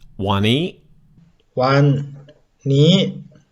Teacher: eat wani that word is cut in half if you look the first half one is flat tone and the second half of the word knee is a high tone word